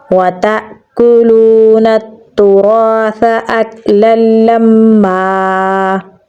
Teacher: لام کو میم کے ساتھ ملائیں گے کیونکہ میم کے اوپر تشدید ہے۔ آیت لگانے کی صورت میں یہاں پر ایک زبر کو ساکن کر دیں گے تو آگے الف مدہ آ جائے گا تو پڑھا جائے گا وَتَأْكُلُونَ التُّرَاثَ أَكْلًا لَمًّا۔ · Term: ادغام غننے کے بغیر